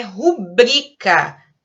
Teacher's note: A palavra certa é rubrica, paroxítona e sem acento.